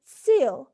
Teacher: the vowel sound e is pronounced with unrounded lips